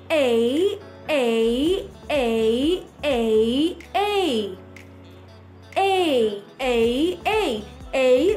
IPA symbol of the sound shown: eɪ